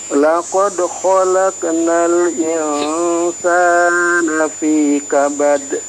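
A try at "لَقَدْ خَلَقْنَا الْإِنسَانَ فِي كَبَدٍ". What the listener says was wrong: Khalaq. Qalqalah huruf qafnya belum keluar tadi.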